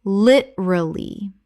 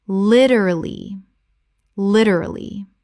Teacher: 3 syllables in natural speech. The second syllable almost disappears.